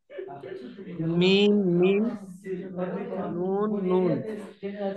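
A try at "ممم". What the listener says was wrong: মিম তিনটে আছে, মিম মিম মিম।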